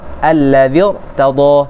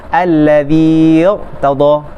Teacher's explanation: bila ya harfu mat bertemu dengan huruf yang sukun, maka ya harfu mat tu dihilangkan harkatnya.